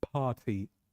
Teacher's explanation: R is silent and the T is subtle.